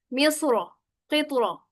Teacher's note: मिस्र की रा पर जबर है और इसको पुर पढ़ना बेहतर है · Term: मोटा